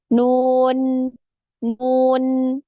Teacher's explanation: jadi di ujung lidah nempel di gusi dari dua gigi seri atas ya · Makanya ketika disukun pun ya, huruf nun ini ada aliran suaranya jadi bukan nun ya, tapi nun nun ya. Nah, huruf nun ini ketika diucapkan ya, ini ada getaran di hidung ya. · Ketika mengucapkan huruf nun, ada gunnah yang keluar dari khoisyum ya, atau rongga hidung ya. Nun, nun ya.